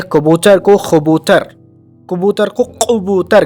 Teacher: عربیت کے زیر اثر کبھی کبھی کیف کا تلفظ قاف بھی کر لیا جاتا ہے